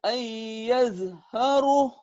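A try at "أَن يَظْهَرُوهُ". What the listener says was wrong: Ayyadharuh. Jadi panjang. Karena mad tabi'i ketemu satu huruf hidup di tengah. Itu yang dikatakan mad alil sukun. Cuman sifatnya sementara ya.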